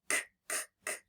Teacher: When I feel my throat, no, it's not buzzing when I make k, k, k, which means it's unvoiced